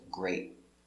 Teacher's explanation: The T is a stop T. You put your tongue up